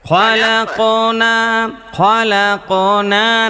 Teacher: কফের উপরে যজম আছে, এটাকে কলকলা করে করতে হবে। কফ, তো, বা, জিম, দাল, এই 5টি হরফের উপরে যদি যজম থাকে তাহলে তাকে কলকল বা প্রতিধ্বনি করে করতে হয়।